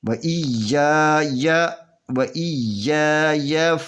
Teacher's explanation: آگے پھر یا ہے تو اس یا کو کھینچ کر نہیں پڑھنا، صرف 1 حرکت پہ پڑھنا ہے